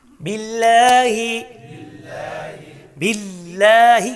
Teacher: اسم الجلالہ گژھِ لام یہِ پوٗرٕ کِنہٕ باریٖک گژھِ یہِ گژھِ مُرقق یعنی باریٖک کیازِ اَمہِ برونٛٹھ آیہِ کسرہ